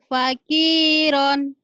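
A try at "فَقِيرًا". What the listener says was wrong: Jangan ditahan. Faqiran dilepas. Lagi.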